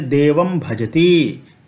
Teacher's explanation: अनुस्वार का उच्चारण यहाँ पर मकार के समान हो जाएगा, कारण कि भ जो है वह प वर्ग का है और प वर्ग का अंतिम वर्ण मकार है।